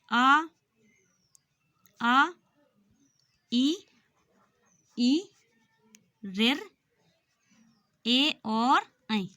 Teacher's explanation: यानी इसमें हमारे होंठों का आकार गोल नहीं हुआ या नहीं बदला। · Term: अव्रतमुखी